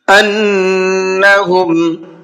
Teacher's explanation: نون کے اوپر تشدید ہے، غنہ کر کے پڑھیں گے